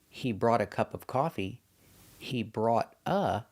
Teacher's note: if I use a vowel after the word brought, example, he brought a cup of coffee, he brought a, the T changes to a D.